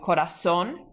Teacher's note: it ends with an N, but that spoken accent is on the last syllable